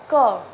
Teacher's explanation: जब क बोलते हैं तो क में क के साथ अ की ध्वनि भी आती है ना